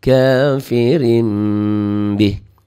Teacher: Baca iklabnya ngiung gitu ya, kayak ada ikhfa juga.